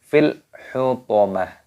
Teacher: Taknya tak marbutoh, ketika berhenti waqaf maka dimatikan, taknya berubah menjadi huruf ha.